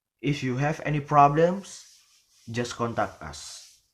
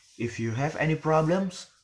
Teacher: so the word problem is rising, and then the next is just contact us, so the intonation is falling. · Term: conditional sentence